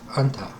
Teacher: And in Arabic, it's anta, nasalizing the dental consonant.